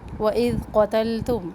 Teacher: واو ہونٹوں کی گولائی سے اذال کو نرم پڑھنا ہے، از نہیں پڑھنا، سختی سے نہیں پڑھنا